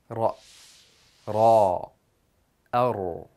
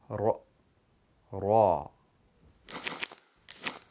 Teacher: Ra is pronounced by putting the tip of the tongue against the front of the hard palate while rolling out air.